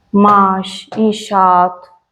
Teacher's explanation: Tələffüz zamanı saitin biri düşür, digəri uzun tələffüz olunur. Uzun tələffüz olunmaq qoşa nöqtə ilə ifadə olunur.